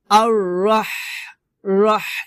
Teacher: হলকের মধ্যখান থেকে আপনাকে বাতাস বের করতে হবে চিকন বাতাস বের করে উচ্চারণ করতে হবে